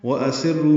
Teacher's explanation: وَأَسِرُّوا میں واو ہونٹوں کی نا تمام گلائی سے ادا کریں گے، حمزہ اقصی حلق سے بالجہر ادا ہوگا، جلدی پڑھیں گے، سین کو را سے ملائیں گے، سر سین باریک ہے، را پر ہے، رو واو مدہ ہے، 2 حلقات لمبا ہے، قو واو لین ہے، یہ 1.5 حلقت لمبا ہوتا ہے، یعنی زیادہ لمبا اس کو نہیں کرتے۔